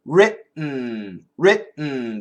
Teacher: If we move the tongue, writ. Don't move the tongue. Keep the tongue there, writ, and then make the N sound.